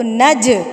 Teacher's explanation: جیم کو ہلائیں گے، تھرتھراہٹ پیدا کریں گے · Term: حروف قلقلہ